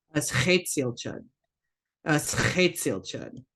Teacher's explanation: As chetzel chud. So that X wedge, remember that back in the throat raspy H sound.